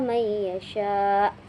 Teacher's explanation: nun matinya bertemu dengan ya sehingga dibaca dengan dengung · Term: idgham bighunah